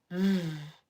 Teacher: There's that same sound as the F, but vibrates.